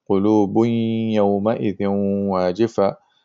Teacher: Idgham bi gunna means you have idgham with gunna. So you have to pronounce the nasal sound, which is the gunna sound